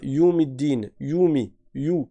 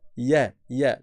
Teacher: Tu commences avec la fatha bien ouverte et après tu passes au waw en faisant la transition parce que c'est un harf lin.